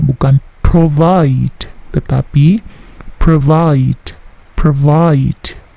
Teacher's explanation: Perhatikan bunyi plosifnya, P tidak terlalu besar